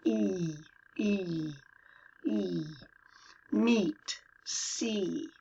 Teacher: Meet is, it's almost a pure E, but we kind of bite it at the end. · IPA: /iy/